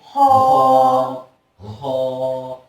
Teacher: हलक में थोड़ी सी खराश जाहिर होगी। इसको अदा करते वक्त हलक के अंदर थोड़ी सी खराश का खराश पैदा होगी।